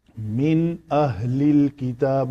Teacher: نون کے بعد حروف حلقی میں سے حمزہ ہے تو نون کا اظہار کیا، من نہیں کیا۔